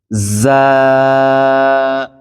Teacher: উপর নিচের দুই দাঁত একসাথে করে তারপরে যা উচ্চারণ করতে হয়